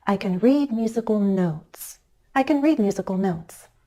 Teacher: go up a little and glide down · my pitch changes on the word notes that's the final content word which makes it the focus word of the sentence